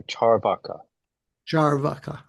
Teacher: So there's equal stress on the two vowels.